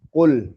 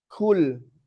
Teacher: Huruf qof itu jahr. Gak boleh pakai angin.